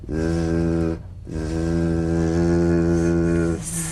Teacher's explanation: The Z vibrates in that very small open space between the tongue and the upper teeth.